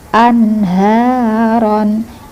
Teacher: Anharon H-nya panjang. Hnya panjang dua ketukan ron pendek saja.